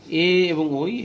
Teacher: এ এবং ওই এটা উচ্চারণ যৌথভাবে, এ এবং ওই কণ্ঠ এবং তালুতে চাপটি পড়ে বাতাসে চাপ, তাই কণ্ঠ তালব্য বর্ণ